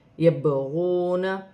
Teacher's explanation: با ساکن ہے، حرف قلقلہ میں سے ہے، قلقلے کے ساتھ ادا کیا جائے گا